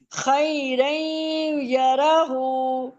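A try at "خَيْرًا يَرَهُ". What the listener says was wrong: یہ دونوں غلط پڑھے ہیں نا، اور روئیں، را کو موٹا پڑھیں. رئی نہیں، روئیں.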